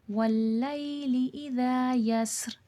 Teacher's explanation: اذا میں دیکھیں الف مدہ ہے، الف سے پہلے زبر ہے، تھوڑا کھینچ کے پڑھا جائے گا اذا، اور زال نرمی والا حرف ہے، نرمی سے پڑھا جائے گا۔